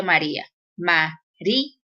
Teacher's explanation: se forma con una vocal cerrada y una vocal abierta, pero en la vocal cerrada va a recaer la mayor fuerza de voz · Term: hiato